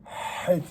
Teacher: C'est une lettre gutturale, d'accord, qui se prononce Het, c'est-à-dire elle est vraiment du fond de la gorge.